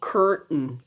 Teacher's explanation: Vous allez entendre beaucoup d'Américains ne pas prononcer le AI. Le AI dans ce mot est muet. Vous allez entendre curtain.